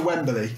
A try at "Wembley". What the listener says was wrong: You got an extra syllable in Wembley there.